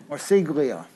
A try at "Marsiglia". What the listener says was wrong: It's Marcelia. The G is silent.